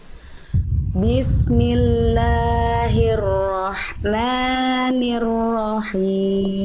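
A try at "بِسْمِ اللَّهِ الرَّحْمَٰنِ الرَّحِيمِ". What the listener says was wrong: Sekali lagi hati-hati madnya, jangan ada kepanjangan, maknya kepanjangan sedikit. Bismillahirrahmanirrahim.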